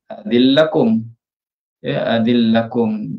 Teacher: pada adzina lakum nun bertemu dengan huruf lam, kedua-duanya baris dipanggil idgham kabir, dimasukkan dalam lam lah